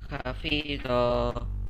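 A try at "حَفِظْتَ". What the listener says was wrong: Bukan hafidota ya. Hafidta. Jadi sebelum ta itu disukunkan. Hafidta.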